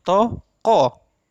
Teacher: ko ini tidak tertutup, tetapi ada penekanan yang lebih pada kata ko